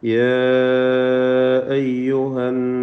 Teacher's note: യാ അയ്യുഹന്നാസു, ഇവിടെ യാ എന്നതിലെ ദീർഘം മദ് മുൻഫസിൽ ജായിസ് ആണ്. അലിഫിനെ 4-5 ഹറക്കത്തിൻ്റെ അളവിൽ ദീർഘിപ്പിക്കൽ അനുവദനീയമാണ്